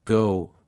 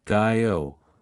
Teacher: in Australian English, the word go might sound like gao, reflecting a wider range of diff thong movement.